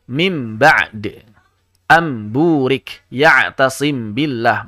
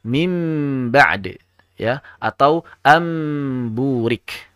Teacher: mesti diizharkan suara mimnya, tidak boleh dipanjangkan dengan ghunnah